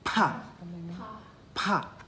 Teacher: When you say pa with the H sound, it's kind of explosive.